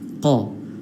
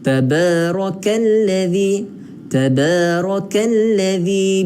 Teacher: Kaf ni ada beza dia dengan qaf. Qaf ni dalam, kaf ni agak luar sikit kan. Kaf ni lembut, qaf kena dalam.